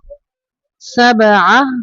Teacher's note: با کو قلقلہ کرنا ہے